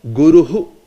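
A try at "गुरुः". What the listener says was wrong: Hu. You understand? That hu is coming in the end. You know, Guruhu.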